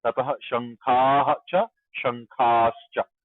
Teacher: wherever cha comes, there is visarga becomes sha